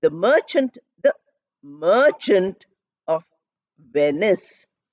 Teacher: I'm putting the maximum stress on the second word, which is a noun, and the fourth word, which is also a noun. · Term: stress pattern